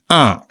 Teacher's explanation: நாங்கள் கொஞ்சம் மூக்கால உச்சரிக்க வேண்டும்